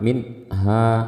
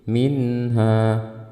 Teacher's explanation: Minha, dan saat membacanya kita jangan sampai kita memahami membaca tanpa gunnah ya, tapi membaca tanpa gunnah yang panjang. Tetap ada gunnahnya tapi tidak panjang. Kenapa? Karena sifat nun secara umum itu gunnah. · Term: izhar